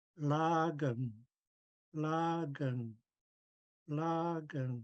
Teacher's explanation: you block off the air flow at the back of the mouth um and produce the l sound from there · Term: stop before the L